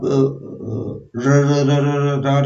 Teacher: जीभ जो है बीच में खड़ी हो जाती है, ना ऊपर जाती है ना नीचे जाती है, कांपने लगती है